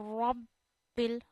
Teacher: جب کسی ورڈ پہ تشدید آتی ہے اس ورڈ کو 2 بار پڑھتے ہیں، ایک بار آپ نے را کو با سے جوائن کرنا ہے، پھر دوسری بار با کو زیر کے ساتھ پڑھنا ہے اپنی حرکت کے ساتھ۔ اور رب بل، با پہ کافی زور ڈالنا چاہیے کیونکہ ہم تشدید والے لفظ کو واضح کرتے ہیں کہ زور ڈال رہے ہیں۔